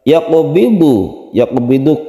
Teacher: Wallahu, lafaz Allah yang lam jalalah dibaca tafkhim karena sebelumnya ada fathah, dibaca tebal ya. Yaqbidu, yaqbidu qaf yang qalqalah sughra dipantulkan